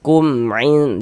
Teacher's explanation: Kumin dibaca jelas kemudian dibaca pendek tidak didengungkan, pendek saja. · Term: izhar syafawi